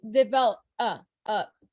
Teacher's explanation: it's not a harsh oh like stop right it's a uh and it's soft which is something called a schwa okay that schwa and pronunciation is kind of like a sound